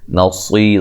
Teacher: صاد کو موٹا ادا کریں گے